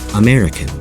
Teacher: can you hear how the stress is on the second vowel syllable